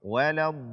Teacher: mengganti huruf dhad dengan dal yang dibaca dengan o